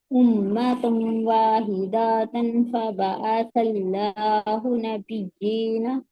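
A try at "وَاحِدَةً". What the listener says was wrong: यहाँ पर देखिए वाहिदातन नहीं, दाल पर एक हरकत है। वाहिदतन।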